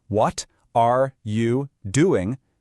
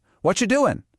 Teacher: But it sounds like a robot, right? But a native speaker smooshes it all together into one smooth sound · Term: connected speech